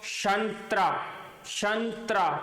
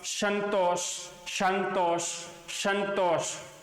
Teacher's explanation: तो देखो संतरा शब्द बोलते हैं तो जीभ है वो ऊपर के दांतों को स्पर्श करेगी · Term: दंते स